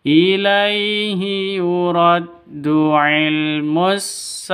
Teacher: saah sa panjang dua ketukan ada Alif diawali dengan fathah